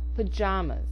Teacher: 3 A's, with 2 being produced as the short schwa or sound, and the middle A getting the full pronunciation